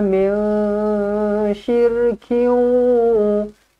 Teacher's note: Nun kosong bertemu dengan shin ikhfa hakiki, dengungkan dua harakat.